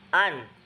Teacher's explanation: Maksudnya bahwa nun itu keluar dari khaysum, dari rongga hidung ya.